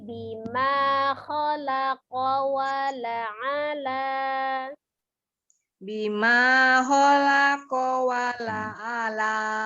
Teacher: Tapi A-nya tidak panjang, A-nya pendek. Wala ala, La-nya yang panjang.